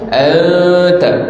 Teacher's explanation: nun mati bertemu dengan tak, maka bunyi itu lidah kita senggang antara langit dan bawah dan didengungkan. Anta nipis, sebab ta tu huruf dia ni nipis. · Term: ikhfa hakiki